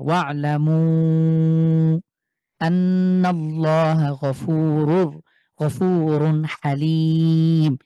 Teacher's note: এক আলিফের পরে লম্বা হামজা, এই কারণে ৩ আলিফ টেনে পড়বো আমরা।